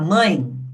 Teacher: quando a gente fala mãe, reparem que esse é tem som de i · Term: semivogal